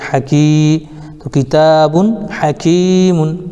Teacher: تنوین کے بعد حروف حلقی میں سے ہا آ رہا ہے اس لیے اظہار ہوگا، نون کو ظاہر کر کے پڑھنے کو اظہار کہتے ہیں۔ یا ساکن سے پہلے کاف کے نیچے زیر ہے اس لیے یا مدہ ہوگا، ان کو تھوڑا کھینچ کر پڑھیں